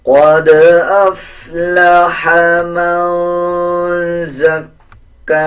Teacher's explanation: دال کے اوپر جزم ہے، دال کے اوپر قلقلہ کیا جائے گا